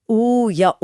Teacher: उ या ओ बोलते समय होंठ गोल हो जाते हैं